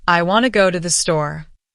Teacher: The stressed words are want and store. Everything else, I, to, go, to, the, those happen quickly between the beats.